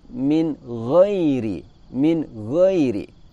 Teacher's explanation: Di situ terdapat nun mati bertemu dengan huruf ghain. Di situ nun mati atau nun sukun kita baca dengan suara jelas, di mana sifat dengung dari nun hanya sedikit saja dan tidak boleh dipantulkan. Suara pantulan dari nun biasanya terjadi akibat tekanan yang terlalu kuat.